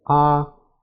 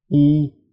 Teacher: Your mouth is more closed for E, and, although it can be hard to feel, your tongue is further forward in your mouth.